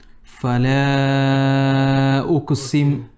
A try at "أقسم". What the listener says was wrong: On the qaf, do a bit of qalqala. أقسم.